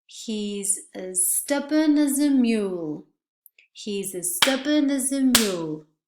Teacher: The as and the article are not pronounced as a complete vowel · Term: schwas